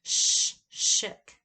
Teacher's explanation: the esh makes the shook sound, and that's voiceless palatal, or it can also be called postalveolar fricative, and it's formed in the back by that hard palate.